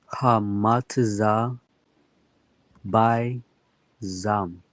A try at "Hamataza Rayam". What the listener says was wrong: Hamataza, and then this third letter here, this is a Ra. That it would be a Ya. So Hamataza Rayam. Hamataza Rayam.